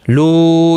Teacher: یہاں پر مد منفصل ہے، 3 الف کی مقدار کے برابر کھینچ کر پڑھیں گے